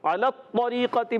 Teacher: عین حلق کے درمیان والے حصے سے ادا ہوتا ہے. علی الطریقۃ میں جب لام پر آپ زبر دیکھ رہے ہیں، لام کا زبر طو سے مل جائے گا.